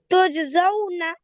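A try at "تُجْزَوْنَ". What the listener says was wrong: उसको लंबा नहीं करना है, ये स्वीप तेज पढ़ना है, जौ।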